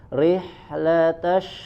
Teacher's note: posisi bibirnya sama termasuk ketika mengucapkan huruf shinnya juga tidak manyun. Rihlatashi bukan rihlatasyita.